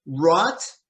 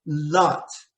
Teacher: rot starts with the tongue at the back of your mouth and l starts with your tongue just behind your teeth